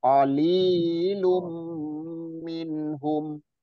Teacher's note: Qalilum minhum, kalau li-nya dua harokat sekali ayun aja.